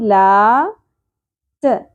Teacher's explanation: ت باریک ہوگا اور زیادہ نہیں کھینچنا، آدھی الف کے برابر